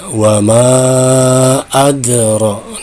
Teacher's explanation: mad tabi'i bertemu dengan hamzah pada lain kalimat disebut dengan mad jaiz munfasil. Nah, ini boleh dibaca 2 atau 4. Yang penting konsisten dari awal sampai akhir.